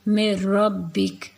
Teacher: نون کو را میں مدغم کر دیں گے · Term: بلا غنہ